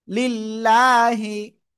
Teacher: আল্লাহ শব্দের লাম এর ডান পাশে জের যদি আসে তাহলে চিকুন করে পড়বো। চিকুনটা কি লয় আকারে লা এর মতো উচ্চারণ হবে।